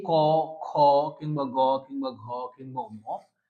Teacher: এর উচ্চারণের স্থল হচ্ছে কন্ঠ। উচ্চারণ করলে আপনি কন্ঠ থেকে আসবে। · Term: কণ্ঠ